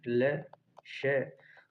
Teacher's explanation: ल और श का उच्चारण स्थान दंत से होता है,